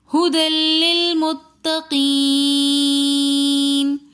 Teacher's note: متقین میں یا مدہ کے بعد نون ساکن آ رہا تھا تو اس لیے ہم نے اس کو کھینچ کر پڑھا